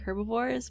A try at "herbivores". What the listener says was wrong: No, you said herb. Herbie the Love Bug. That's what you said.